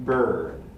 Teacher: the high central vowel in a stressed position this is the er between the and the d in bird